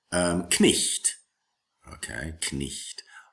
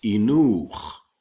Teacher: The grapheme, GH, is silent today in English, but in Middle English, you have to pronounce it.